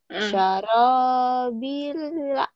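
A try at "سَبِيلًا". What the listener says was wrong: Sarobila. Nah, berarti nanti latihan membedakan antara sya lalu fa dengan sa ya. Ini ya, ada ya perbedaan gitu. Jadi biar enggak semua ada y gitu.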